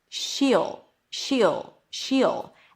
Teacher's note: high E and then just the dark L.